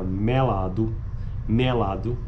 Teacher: a pronúncia de vogais médias pretônicas como ocorre na palavra melado pronunciadas com vogais abertas do Nordeste